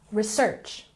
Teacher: Next we have research. It has emphasis on the second syllable.